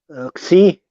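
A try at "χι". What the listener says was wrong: Nope. It's not like it's not like the English. It is he. He.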